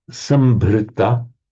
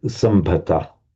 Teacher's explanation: So Sanskrit, sambhrita, which becomes in Pali sambhata. So the r just gets lost.